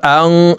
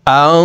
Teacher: নুন সাকিনের পরে ইকফার হরফ আসছে, এই কারণে এই নুন সাকিনকে নাকের ভিতরে লুকাইয়া গুন্নার সহিত পড়তে হবে। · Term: ইকফা গুন্না